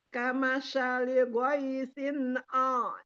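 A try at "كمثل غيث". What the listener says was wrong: Nah, di sini sama sa-nya ini sama ghaisin. Ghaisinnya bagus, kamasanya tadi pakai shin. Kama sali ghaisin. Ta. Ta. Bukan sya. Ta. Ta. Ta. Kamasa. Bukan sya. Kamasa.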